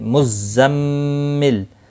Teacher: زا کو تھوڑا سختی کے ساتھ ادا کریں تاکہ صفیریہ ادا ہو